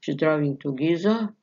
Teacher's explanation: Incomplete fall, hesitation or lack of confidence.